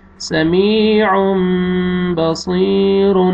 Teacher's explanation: یہاں بھی دیکھیں تنوین کے بعد با ہے، آپ نے تنوین کے نون کو میم میں چینج کرنا ہے اور غنہ کریں گے، اور یہ یا مد ہے یا جزم سے پہلے زیر، میم کو آپ نے کھینچنا ہے.